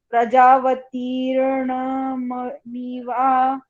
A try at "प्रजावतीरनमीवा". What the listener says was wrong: रनमीवा प्रजा ण नहीं है ना, प्रजावती रनमीवा। ये शब्द प्रजावती अनमीवा ऐसे बनता है। और थोड़ा उसका अनमीवा, अनमीवा शब्द है और प्रजावती ही शब्द है।